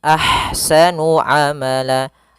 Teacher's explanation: Kemudian pada lafal ahsanu, di sini ada ha yang berharakat sukun maka dinamakan dengan ha hams. Alirkan nafasnya, kemudian baru dibaca dengan sa-nya.